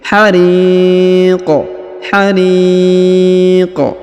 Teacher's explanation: huruf Qi disukunkan atau dimatikan sehingga kita pantulkan atau kita qqolahkan dalam membaca huruf q yang di ujung hariq